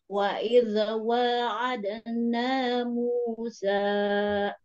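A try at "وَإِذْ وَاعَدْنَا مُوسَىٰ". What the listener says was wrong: Nah, sa-nya dikurangi sedikit. Musa, sa, 2 ketukan. Ya, 2 harakat, Bu, ini. 2 harakat.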